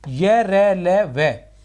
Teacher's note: यह और वह के उच्चारण में, ठीक है ना, क्रमशः जीभ, तालु तथा ओष्ठ का स्पर्श क्षणिक और कम होता है, इसलिए इन्हें इष्ट स्पष्ट व्यंजन कहते हैं। यह, रै, लय तथा वह का उच्चारण अवरोध की दृष्टि से स्वर एवं व्यंजन के बीच का होता है, अतः इन्हें अंतस्थ व्यंजन भी कहा जाता है।